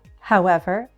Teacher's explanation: a fall rise can also happen on an introductory word